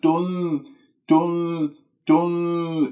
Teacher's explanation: أنا نطقت النون ودخلت في الإخفاء، لكنه الشفاه لا زالت مضمومة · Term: تخليص الحركات